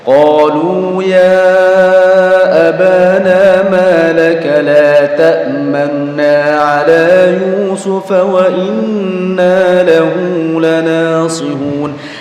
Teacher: Jadi dibaca la ta'manuna, cuma nunya tidak jelas ya. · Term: raum